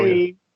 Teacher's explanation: the only thing there is you don't want to release the G here.